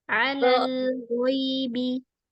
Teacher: Tapi ghaibi angkat sedikit pangkal lidahnya.